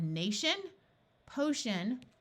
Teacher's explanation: the TI and the CI in these suffixes sound like sh